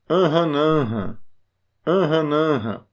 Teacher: Note que o til, ele não torna a sílaba mais forte. Ele não faz isso. Ele só marca que aquela sílaba é nasal. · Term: Vogais nasais